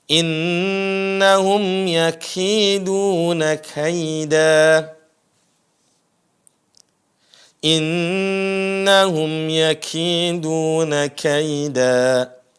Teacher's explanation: huruf kaf, sekali lagi, itu ada desisnya. Dan biasakan ada desis.